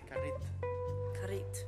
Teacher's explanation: indigenous people, they don't say the last syllable. They instead of saying carrito, they say carrit.